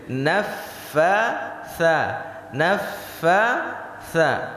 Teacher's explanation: Di fa dan sa ada hembusan nafas. Kalau tidak keluar, maka tidak benar ucapan kita.